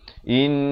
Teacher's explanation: In itu wajibul gunnah 2 harakat dengung. Jangan baca innahu.